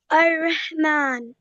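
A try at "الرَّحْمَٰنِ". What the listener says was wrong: इसको लंबा करो थोड़ा सा. मीम को लंबा करो. और हा को प्रोनाउंस करो.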